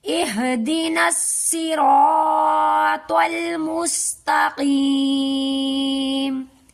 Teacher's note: ہم قاف کو بھی حلق سے نکالیں گے اور پر کرنے والے حرف کو پر کر کے اس آیت کو ادا کریں گے